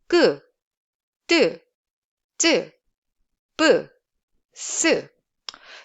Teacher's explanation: It's a basically voiceless sound and produced with a glottis, your glottis, constricted and building up the air behind and releasing the closure while pushing the air forward without any aspiration. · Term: tense sound